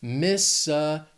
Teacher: This state has 4 syllables. The stress is on that 3rd syllable. That second one's just that schwa.